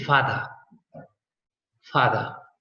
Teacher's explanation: in British they don't pronounce the R